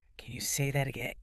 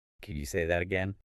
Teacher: You need to use rising intonation. Your voice should go up at the end.